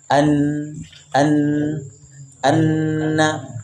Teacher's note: ujung lidah menempel pada bagian gusi atas